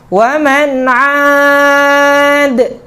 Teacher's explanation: Karena huruf dal ini memiliki dua sifat, yaitu syiddah dan jahar. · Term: Qalqalah